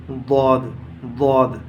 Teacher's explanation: ضاد کا مخرج ہے زبان کا کنارہ اور اوپر کے داڑوں کی جڑ، ضاد، قدرے موٹا پڑھا جاتا ہے، بالکل ایسا پڑھا جاتا ہے جیسے دال بن گئی۔